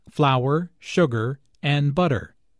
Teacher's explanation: Notice that this is a list, so there are short pauses between each item. · Notice also that each ingredient is stressed because this information is important.